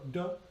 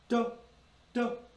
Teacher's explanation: notice the tip of your tongue goes to the roof of your mouth, but it doesn't linger. It's like touching your finger to a hot burner. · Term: quick D